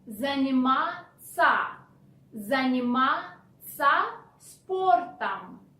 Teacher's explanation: And moreover, instead of ся, which is the proper way to spell the verb, in spoken language you change ся into ца